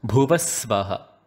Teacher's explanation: in Bhuvaha Svaha, we change the Ha to a S sound itself. So it becomes Bhuvasvaha.